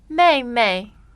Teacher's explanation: So that's fourth tone and neutral tone,